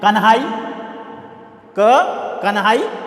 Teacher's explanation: उसी प्रकार से कन्हाई, कन्हाई, तो ये ह के साथ में न का उच्चारण हो रहा है, इसलिए वह दीर्घ हो गया, महाप्राण हो गया।